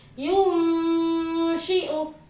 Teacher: Nah, untuk contohnya yang nun mati, ya, contohnya nun sukun yang bertemu dengan huruf ikhfa, contohnya yaitu yunshi'u. Jadi suara nun sukun di sini ketika bertemu dengan salah satu huruf ikhfa yang berupa shin disamarkan. Suara nun sukunnya disamarkan.